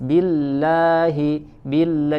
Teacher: Billah, bi kasroh dibaca tipis, kemudian lam bertasydid ya, kemudian fathah ya, lam tasydid fathah juga dibaca tipis. Billahi, billah, jangan billahi, billah, sempurnakan buka mulutnya tetapi tanpa berlebihan.